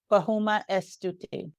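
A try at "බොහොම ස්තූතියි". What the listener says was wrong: You don't have to pronounce the E as much. Try to just not pronounce the E as much. So Stuti, E is silent, yeah.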